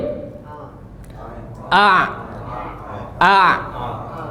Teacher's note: Dia enggak ada bermain lidah. Dia di tenggorokan.